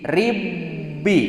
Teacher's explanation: kulantaran diasupkeun huruf nu kahijina otomatis qalqalahna oge teu aya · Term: idgham